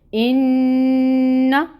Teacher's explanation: نون مشدد ہو تو غنہ کرتے ہیں۔ غنہ کا مطلب کیا ہوتا ہے کہ اس نون کی آواز کو ناک میں 2 حرکت کے برابر آپ نے ٹھہرانا ہے